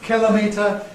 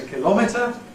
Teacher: older people with initial stress younger people with stress on the second syllable